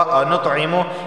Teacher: انطعمو یہاں پر دیکھیں تو جو ہے یہ حروف قلقلہ میں سے ہے تو یہاں پہ قلقلہ ہوگا. انطعمو یعنی آواز مخرج سے ٹکرائے گی